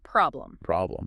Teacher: The O sound is that short, open O, again, like in hot. · For problem, the stress is firmly on the first syllable.